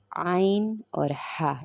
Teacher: اور حلق کے درمیانی حصے سے ہم نے عین اور ہا ادا کرنا ہے، عین اور ہا، یہ حلق کے درمیانی حصے سے ادا ہوں گے۔